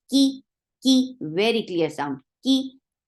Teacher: Lal, ki is very light, and ki is there is no hums. Make sure you don't bring hums in kaf when it is mutaharika.